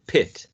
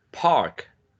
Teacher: when it comes in initial position, it's usually aspirated. Aspirated means that there is a explosion when you produce a sound